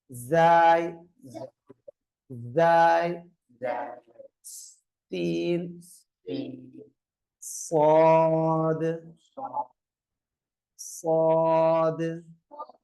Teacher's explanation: நுனி நாவு மேலும் மேல் வரிசை கீழ் வரிசை பற்களுக்கு நடுவிலிருந்து மூன்று எழுத்துக்கள் உச்சரிக்கப்படும்